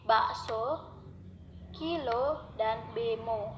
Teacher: Vokal O dilafalkan dengan cara menarik lidah jauh ke belakang dan ke tengah, disertai dengan menghembuskan udara keluar, sedangkan bentuk mulut dibundarkan. Ucapan vokal O akan A menjadi agak panjang karena posisi lidah berada lebih tinggi apabila vokal O itu diantaranya berada pada suku kata terbuka, misalnya vokal O pada suku akhir pada kata-kata bakso, kilo, dan bemo.